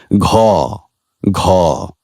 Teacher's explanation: গ গ একইভাবে ঘ জিহ্বামূলীয়, পশ্চাৎ তালুজাত বা কোমল তালুজাত। ঘোষ কিন্তু মহাপ্রাণ ধ্বনি, যে কারণে এটি উচ্চারণের সময় আমাদের স্বরতন্ত্রী বেশি কাঁপে এবং ফুসফুস থেকে বাতাস বেশি বের হয়ে যায়।